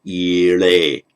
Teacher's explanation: Agnim Ide. But because it's got a vowel on each side of it, in Vedic, it becomes Ile.